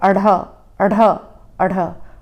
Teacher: अड़ और अढ़ के उच्चारण में भी जीभ मूर्धा को ही टच करती है, लेकिन अड़ और अढ़ का उच्चारण जल्दी से और झटके से किया जाता है, मानो हम मुंह से कुछ फेंक रहे हों। · अढ़ का उच्चारण जब करते हैं तो पीछे से हल्की सी ह की भी आवाज़ आती है, इसीलिए इसे उत्क्षिप्त व्यंजन भी कहा जाता है क्योंकि अढ़ और अढ़ का उच्चारण जल्दी से और झटके से किया जाता है।